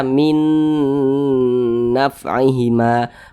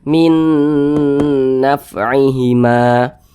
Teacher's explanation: Kita baca min naf'ihima, kemudian digunnahkan. Jadi suaranya itu kita tahan, kita panjangkan sejenak. Panjangnya gunnah atau panjangnya dengungan itu 2 harakat. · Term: idgham bi gunnah